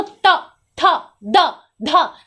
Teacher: दांत को टच कर रहा है हमारा जीभ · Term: दंत वर्ण